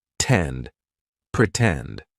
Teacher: Pretend, for example. In the word pretend, the stressed syllable starts with T, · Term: true T sound